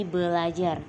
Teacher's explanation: Misalnya dalam bahasa Indonesia ada kata belajar yang berasal dari pembentukan ber plus ajar yang seharusnya menjadi belajar. Namun di sini bunyi R pertama didisimilasikan dengan bunyi L sehingga menjadi belajar. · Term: disimilasi fonemis